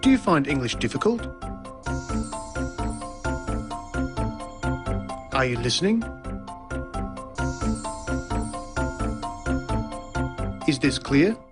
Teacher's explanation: the high or rising tone used for asking a yes no question